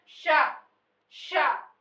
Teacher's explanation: जब हम इसको इस स का उच्चारण करें तो जिहवा को तालव्य के पास ले जाना चाहिए और वहां से उच्चारित करना चाहिए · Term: तालव्य श